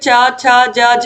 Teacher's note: चा छा जा झा को बोलने के लिए हमारे जीभ के ऊपर जो तालु है उसका इस्तेमाल होता है